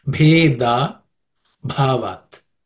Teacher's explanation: bhe and the bha are aspirated consonants because they are again the fourth letter of the pa vargo, pa class of consonants. · So they have to be aspirated. Bhe, da, the da is not aspirate. Bhe, da, bhavat.